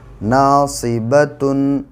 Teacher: الف سے پہلے زبر ہے اس لیے الف مدہ ہوگا، الف مدہ کو ایک الف کے برابر کھینچ کر پڑھیں گے۔ صاد پر دو زیر کی حرکت ہے، زیر والے حرف کو جلدی پڑھیں، تھوڑا بھی نہ کھینچیں، معروف پڑھیں، مجہول آواز سے بچیں۔